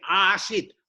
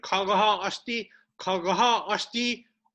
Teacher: Not Asti, not Asit, not short A, but long A.